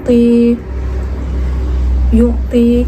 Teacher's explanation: Ti bertemu dengan ya sukun, dibaca dengan panjang 2 harokat.